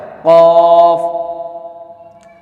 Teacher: حلق کے بیچ والے حصے سے ادا کیا جاتا ہے اور اس کو پر پڑھا جاتا ہے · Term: بڑا قاف